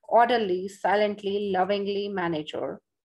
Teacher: stress is placed on the first syllable